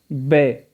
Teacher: دونوں لبوں کو یعنی دونوں ہونٹوں کو بے ملا کر پڑھا گیا ہے